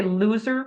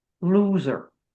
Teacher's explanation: So loser, like we would say loser with the tip of the tongue is right behind the teeth. A nice clear L.